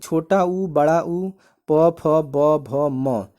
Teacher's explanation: छोटा उ बड़ा ऊ प फ ब भ म इन्हें हम कहते हैं ओष्ठय वर्ण